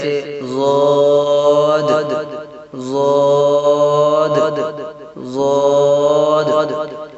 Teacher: زبان کی کروٹ سے جب بائیں طرف والی اوپر کی 5 داڑھوں سے لگے تو اس سے ضاد ادا ہوتا ہے، جیسے ضاد ضاد ضاد۔